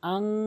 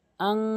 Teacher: হামজা নুন জবর আং নাকের ভিতরে নিয়ে পড়তে হবে, হামজা দুই জবর আং এরকম নাকের ভিতর নিয়ে পড়তে হবে। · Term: গুন্না